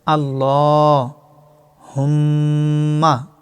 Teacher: আল্লাহ শব্দের ডাইনে জবর থাকার কারণে লাম জবর ল মোটা করে এবং লামের উপর খারা জবর এক আলিফ পরিমাণ টানতে হবে আল্লাহ